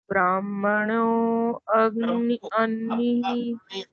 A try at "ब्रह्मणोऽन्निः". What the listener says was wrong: ब्रह्मणोन्नी। ब्रा छोटा है, ब्रा छोटा है।